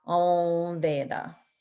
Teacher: It's kind of like you're closing the mouth and creating a nasal sound, but you don't, it's like you're nasalizing the va. So Om Veda. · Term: nasalizing a v sound